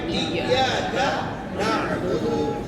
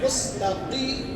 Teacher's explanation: जो बड़ी काफ है, नुक्ते वाली काफ है, इसको हम मोटा पढ़ेंगे।